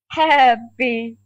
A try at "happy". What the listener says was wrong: Well, so try to open your mouth more. Happy.